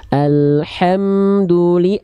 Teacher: ha dari tengah tenggorokan